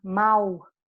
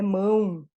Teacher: já trabalhou fonética aqui a gente não vai para anunciar mal não é mal é mão eu vou pronunciar nasal